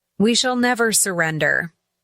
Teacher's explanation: The emphasis on shall makes the statement even more definitive. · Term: stress pattern